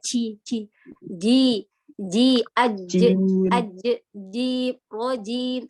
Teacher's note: Huruf jimnya dijaga sifat syiddanya dan jaharnya. Jadi jangan ada udara.